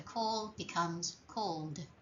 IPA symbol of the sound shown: d